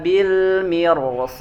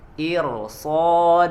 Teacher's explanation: ro sukun ya rosukun sebelumnya kasroh tapi dia dibacanya tebal